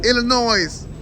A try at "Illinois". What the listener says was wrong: Sound like you say noise.